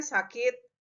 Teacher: Biasanya diujarkannya sakit begitu ya. Jadi I-nya itu yang muncul bukan I tinggi lagi tetapi I rendah.